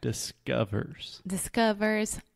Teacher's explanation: don't try to make a circle with your lips don't think about the o sound there is no o there's no ah there's just an uh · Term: the schwa sound